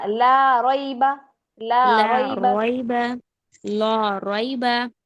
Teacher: लाम मोटा नहीं करना बारीक पढ़ा जाएगा लाम · फी उदा को लंबा नहीं करना बा को लंबा नहीं करना